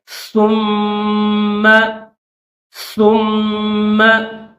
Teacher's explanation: ثا کو پڑھتے وقت پہلے تھوڑی سی زبان کو آپ باہر نکالیے اور پھر اس کو پڑھیے